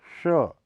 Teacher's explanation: इसके उच्चारण में जीभ और तालु का प्रयोग किया जाता है, इसलिए इसे तालव्य श भी कहा जाता है।